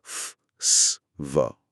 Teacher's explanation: যেমন প ট ক নাকি বাতাসটা পুরোপুরি না আটকে খুব সরু একটা জায়গা দিয়ে ঘর্ষণ তৈরি করে বেরোচ্ছে। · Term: ফ্রিকেটিভস, ফ্রিকেটিভ